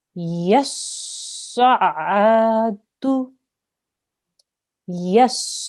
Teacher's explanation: Now, this is a sad, which we know that is a thick sound, so we need to round on the mouth to say it. This is an ayn. We know that comes from the middle of the throat. It's a throat letter.